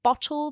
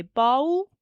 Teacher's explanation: Leaving out the middle sound in words, so if it's a 2-syllable word like bottle, they might say bowl, and just not say that middle sound.